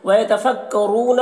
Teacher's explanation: را کو یہاں پر پور پڑھیں گے اور یہاں پر واو مدہ ہے، اسے ایک الف کے برابر کھینچ کر پڑھیں گے رو کو۔